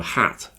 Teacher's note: when you say hat you have to smile more okay it's more tense in your cheeks and your tongue is touching your bottom teeth